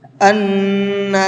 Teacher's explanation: اس نون کے اندر غنہ کریں گے کیونکہ نون کے اوپر تشدید ہے